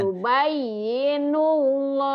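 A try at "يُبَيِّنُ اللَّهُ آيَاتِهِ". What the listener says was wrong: Tuh, masih. Katahan, masih. Kalau ibu kan yubayyi, agak kagok. Cepet aja di sini. Yubayyinullahu ayatih gitu, Bu. Jangan panjang, ayo.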